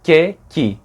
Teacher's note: Você já fazia o sonzinho de que, só que com a língua para frente.